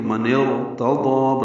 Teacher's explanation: حمزہ عارضی ہے اس لیے من اور ارتضا ملائیں گے تو من ارتضا را پر پڑا جائے گا